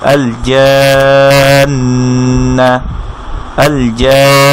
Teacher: 4 আলিফ টানার পরে এটাকে গিয়ে ধরবে নুন তাসদিদকে, একটু নেজাল সাউন্ড হবে, এরপরে যে হারাকা আছে তার উচ্চারণ হবে আল জান্না। · এই এক আলিফ মাদটাকে 4 আলিফ করে পড়তে হবে। যেমন এটা ছিল আল জা, এবং একালিফ বলতে আমরা বলেছিলাম যে একটা আঙ্গুল ফোল্ড করতে বা ভাঁজ করতে যতক্ষণ সময় লাগে, ঠিক 4টা আঙ্গুল ভাঁজ করতে যতক্ষণ সময় লাগবে এটা ততক্ষণ সাউন্ডটাকে আমি কন্টিনিউ করব।